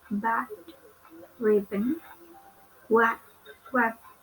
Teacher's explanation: Next is English consonant B. It belongs to bilabial and stop.